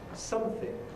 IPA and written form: ˈsʌmθɪŋ (something)